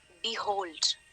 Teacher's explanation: the second syllable hold is stressed. Right? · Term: iambic